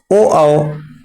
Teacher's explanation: ओ कंठ प्लस ओष्ठ कंठोष्ठ से निकलते हैं